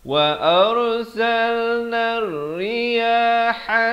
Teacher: Dia masuk ke dalam hamzah wasal, lam dan ra yang bersabdu. Jadi alif lam syamsiah di sini, lam tidak dibunyikan, jadi nun baris atas terus naik di atas ra. · ha di pertengahan kerongkong